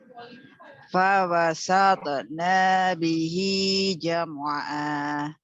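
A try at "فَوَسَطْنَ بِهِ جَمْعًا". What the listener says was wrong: Ada dua objek huruf yang diperbaiki, to dengan nun. Ya, to harus sambung terus. Fawasatona, tidak ada jeda berhenti. Fawasatona langsung. Dan nanya pendek. Fawasatona bihi nanya pendek.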